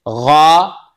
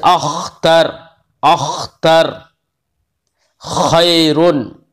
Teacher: غین اور خا آخری حلق سے ادا ہوتے ہیں